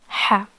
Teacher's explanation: part of the throat becomes narrower when there is constriction and there is no vibration while pronouncing this sound